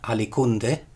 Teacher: So essentially, in alicunde, you can still see that labiovelar element delabialized to a plain velar, alicunde. But Romans at some point wrongly divided this up, not into ali and kunde, but into alic and unde.